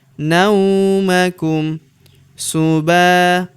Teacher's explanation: Huruf ba kita panjangkan dua harakat karena terdapat tanda alif di depannya